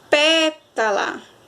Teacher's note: pétala pé saiu mais forte e ela é a antepenúltima sílaba da palavra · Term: sílaba tônica